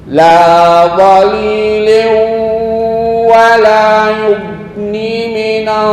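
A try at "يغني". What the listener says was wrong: Yughni. Satu alif.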